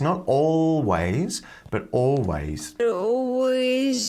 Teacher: make sure you're pronouncing that s with a z sound